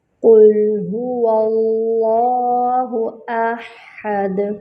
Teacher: حمزہ اقصی الحلق سے ادا ہوگی، ہا وسط الحلق سے ادا ہوگی اور دال پر جو ہے وہ کلکلا کریں گے، یعنی آواز پلٹ کر آئے گی دال میں۔